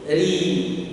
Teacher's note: Ri, turun pangkal lidahnya.